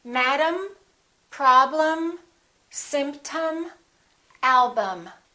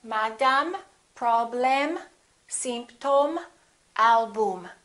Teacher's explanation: the first syllable is stressed and the second syllable is reduced